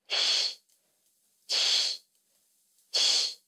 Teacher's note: I też widać tylko moje górne zęby: "ś", "ś". Mój język jest troszkę niżej, jest taki płaski. I ja też czuję jak mój język dotyka trochę moich zębów.